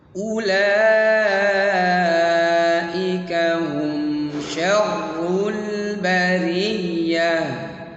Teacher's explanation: Kemudian la itu dibaca panjang 4 harakat. Kenapa? Karena lam ada mad alif, ya.